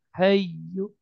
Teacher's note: Al hayyu, ya tasdid, ya nggak panjang, cukup ditekan, naber. Jadi ditekan hayyu, tapi nggak ditahan hai, karena dia bukan idgham bi gunnah.